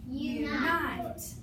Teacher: If you have a U in the unaccented syllable, it is going to be half long